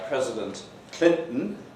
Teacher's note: Glottalization is much less pervasive in American English. It's much less common in American English, except in this context preceding a syllabic N.